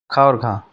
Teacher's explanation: ख और घ ये महाप्राण हैं।